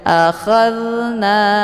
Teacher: Cara bacanya zalnya dialirkan kemudian dengan bacaan yang lembut. Wa a jangan dipantulkan, jangan wa a keluar bunyi the. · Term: zal sukun